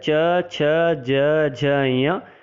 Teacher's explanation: इसका अर्थ होता है ई च वर्ग में आता है च छ ज झ ञ और यकार शकार। इन वर्णों का तालु उच्चारण स्थान होगा